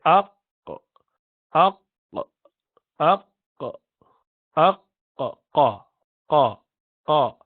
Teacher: If you say Aq, so you would know the base of the tongue goes up to pronounce this letter. If you say Aq, Aq, Aq, Aq, Qa, Qa, Qa. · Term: Qaf